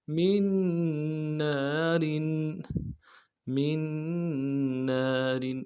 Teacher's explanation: نون کو نہیں پڑھیں گے، اگلے نون کے ساتھ ملائیں گے، تشدید ہے زور دیں گے